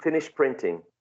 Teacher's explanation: the final sound in finished which is T becomes more similar to P becomes more uh in terms of a place of articulation right · sound finish printing go from sh to P straight away but other speakers may include the final T sound but it sounds more like a p more like the following sound in printing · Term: regressive assimilation